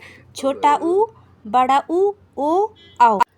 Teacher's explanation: इन स्वरों का उच्चारण स्थान ओष्ठ होता है। मतलब हंठ होता है। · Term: ओष्ठ स्वर